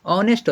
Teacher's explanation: ಅದು ಹಾನೆಸ್ಟ್ ಅಲ್ಲ, ಅದು ಆನೆಸ್ಟ್ ಅಂತ ಉಚ್ಚಾರ ಆಗ್ತದೆ